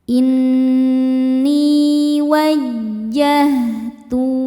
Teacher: Nun tasydid hukumnya gunnah musyaddadah karena nunnya bertasydid. Cara bacanya berdengung, tahan dengungannya kurang lebih 2 harokat. Ni hukumnya mad tabi'i zahiri sebab ada ya sukun sebelumnya berbaris kasrah.